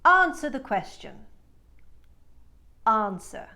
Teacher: She takes the short A, and turns it into the British ask, and she drops the R.